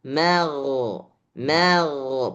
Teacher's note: Ma ini tipis, gha ini tebal.